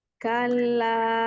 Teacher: Kalla, jangan kalau, jangan naik karena lam bukan huruf tebal. Nanti kalau dinaikkan berubah jadi huruf isti'la.